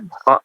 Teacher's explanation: Kha ya, yang betul ada dahaknya, tidak lembut seperti ha hi hu ya, bukan ho hi hu. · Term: huruf kha